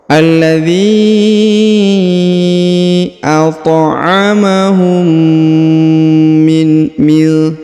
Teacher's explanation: huruf mim bertemu dengan mim bertasdid, maka diberikan penekanannya, ditahan dan ditekan, kemudian didengungkan 2 harokat.